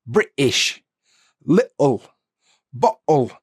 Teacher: Now, this happens in a lot of British accents, and it's where the T sound is replaced with like a little pause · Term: glottal T